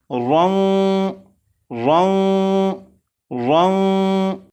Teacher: غنہ اس طرح سے ہوگا کہ زبان تالو سے نہ لگے